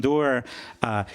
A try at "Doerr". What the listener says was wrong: You're saying doer. It's door.